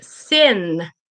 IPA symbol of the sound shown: n